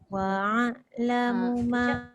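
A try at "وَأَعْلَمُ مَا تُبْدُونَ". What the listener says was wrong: dekat hamzah dengan ain tu. Kena jelas betul-betul dia punya bunyi hamzah dulu.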